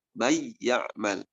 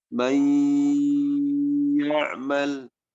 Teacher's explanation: meleburkan bunyi nun atau tanwin huruf setelahnya disertai gunnah 2 harokat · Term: idgham bi gunnah